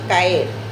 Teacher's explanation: Separación de dos vocales fuertes en sílabas distintas. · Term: Hiato